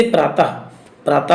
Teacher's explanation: विसर्ग का उच्चारण करते समय हा की ध्वनि आती है।